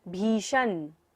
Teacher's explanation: मूर्धन्य श, तो हमें मूर्धा से उच्चारण करना है। उद्भूत भीषण, भ को लंबा लेते हुए श पर जाना है।